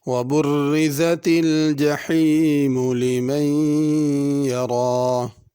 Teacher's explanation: جحیم میں بڑی حا ہے، اس کو جہیم نہیں پڑھنا۔ لمن یہاں پہ غنہ کرنا ہے۔